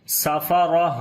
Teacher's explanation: جب تا کے اوپر رکیں گے تو تا ہا بن جائے گی، 2 زیر بھی ختم ہو جائیں گی ، تو سانس جاری کریں گے ادھر بھی، تو پڑھیں گے